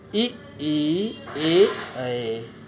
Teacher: जिन स्वरों के उच्चारण में जीभ के आगे वाला भाग काम करता है, उसे अग्र स्वर कहते हैं